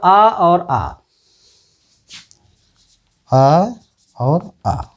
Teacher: कंठ से। कंठ, आ और आ का उच्चारण करने में कंठ से आवाज़ निकलती है, तो इनका उच्चारण स्थान हो गया कंठ।